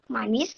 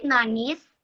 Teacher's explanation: she changed bilabial nasal M to sound N